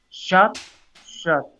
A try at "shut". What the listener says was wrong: close your mouth a little bit more sure more shut sure it's a little closer